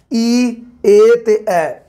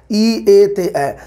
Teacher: ਇਹਨਾਂ ਦੇ ਉਚਾਰਨ ਜਦੋਂ ਆਪਾਂ ਇਹਨਾਂ ਨੂੰ ਕਰਦੇ ਹਾਂ ਤਾਂ ਜੀਭ ਦਾ ਜਿਹੜਾ ਅਗਲਾ ਹਿੱਸਾ ਹੈ, ਅਗਲਾ, ਉਹ ज़्यादा ਉੱਪਰ ਨੂੰ ਉੱਠਦਾ, ਉਹ ज़्यादा ਵਰਕ ਕਰਦਾ, ਉਹਨੂੰ ज़्यादा ਮਸ਼ੱਕਤ ਮਿਹਨਤ ਕਰਨੀ ਪੈਂਦੀ ਹੈ। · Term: ਅਗਲੇ ਸਵਰ